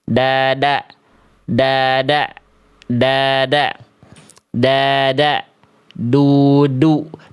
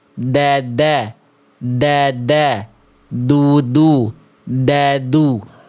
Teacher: Nah, oke gitu ya. Jadi ujung lidah ke pangkal gigi sari atas. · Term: huruf dal